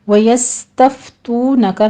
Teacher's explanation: سین کے اوپر ہمس کریں گے سیٹی کی آواز کے ساتھ. فا پر بھی ہمس ہوگا تو میں واو مدہ ہے.